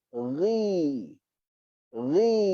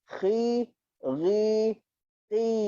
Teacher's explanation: Untuk bagi dia berbaris bawah sambil ketebalannya dikekalkan, kita rendahkan rahang bawah kita. Ni rahang bawah ni rendahkan dia. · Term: huruf tebal